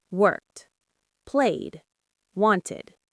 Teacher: Worked ends with a T sound. Played ends with a D sound. Wanted ends with an id sound.